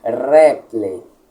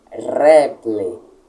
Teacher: A letra R, ela deve ser lida rolando, digamos assim. Por quê? Porque a língua deve se enrolar.